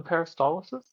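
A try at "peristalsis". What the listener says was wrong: I just feel like you're adding an I in there that doesn't exist.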